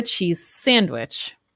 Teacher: I didn't say that Z sound, cheese, very strongly, right? But we linked the sounds